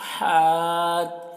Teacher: اس ہا کی آواز ہوا کے ساتھ میں نکلتی ہے